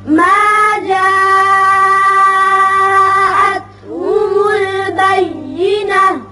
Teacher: جاء مد متصل ہے، 5 حرکات کے برابر آپ اوپر کو کھینچیں گے